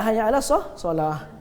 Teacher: Ta marbutah bila wakaf bunyi dia ha kan? Bukan hayya 'alas solat, hayya 'alas solah.